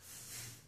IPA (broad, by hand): θ